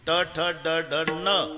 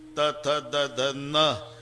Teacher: ट ठ ड ढ न दाताशी संबंध नाही त थ द ध न दाताशिवाय उच्चार नाही हे इथच आहे जवळ इतक बर तसं प ब भ म